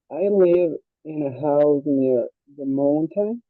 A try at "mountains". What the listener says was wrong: The mountains. No es mo, sino mau. Mountains.